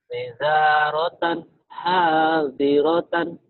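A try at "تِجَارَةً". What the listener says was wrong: Tija, jim. Tija ya, bukan tiza, tija, ja, Jakarta, Jatinegara. Tija, ja, Jakarta.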